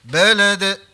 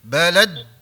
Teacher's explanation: Jangan ditekan huruf dal tu. Dilepas terus.